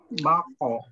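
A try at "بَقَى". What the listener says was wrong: Baqo. Ba-nya tipis, qaf-nya tebal ya. Baqo. Jangan bok, bok, tapi ba, ba. Ya, mengucapkan ba, buka ba. Namun agak sedikit ke samping, sedikit aja ya, jangan terlalu melebar ke samping ya, enggak, tapi ba ba baqo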